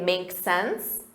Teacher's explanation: you can simply shorten that and say make sense with a rising intonation